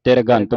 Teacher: ਜੇ ਆਪਾਂ ਜਲਦੀ ਦੇ ਨਾਲ ਉਚਾਰਨ ਨਹੀਂ ਕਰਦੇ ਤੇ ਫਿਰ ਪੂਰਾ ਰਾਰਾ ਲੱਗਦਾ ਇੱਥੇ ਤਿਰਗੰਤ ਬਣ ਜਾਂਦਾ।